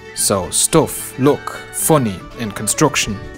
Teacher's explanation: most Irish would pronounce words like stuff, luck, funny, or construction with an O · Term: strut vowel